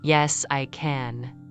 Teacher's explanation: In yes, I can, the word can carries contrast and becomes stronger. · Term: strong form